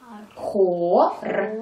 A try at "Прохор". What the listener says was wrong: Вот так.